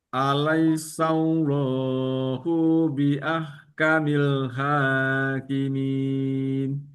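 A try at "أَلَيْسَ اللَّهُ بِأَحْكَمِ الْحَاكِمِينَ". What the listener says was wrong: hunya pendek saja, pendek saja hunya. Allahu bi ahkamil hakimin. Itu ya, pendek saja. Ingat lagi panjang pendeknya. Lihat lagi bahwa tidak perlu dipanjangkan yang pendek-pendeknya.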